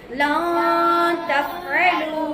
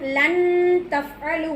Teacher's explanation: அந்த நூனை சாக்கினை மறைத்து விட வேண்டும் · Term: இஹ்ஃபாவுடைய சட்டம்